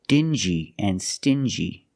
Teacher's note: These two words have the regular n sound, n, plus the j, like juice.